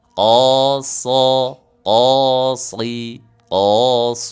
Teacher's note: Pancing pakai huruf qof untuk menebalkan huruf shad.